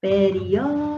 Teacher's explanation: você vai demorar mais aqui na antepenúltima sílaba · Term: proparoxítonos